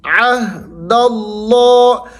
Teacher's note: لفظ اللہ کو آپ نے موٹا کر کے پڑھنا ہے، کیونکہ لفظ اللہ سے پہلے حرف کے اوپر یہ قاعدہ ہے، زبر ہے، جب زبر آ جائے تو آپ نے اس کو موٹا پڑھنا ہے۔